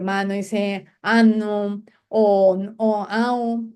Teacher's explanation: y omite la m y la n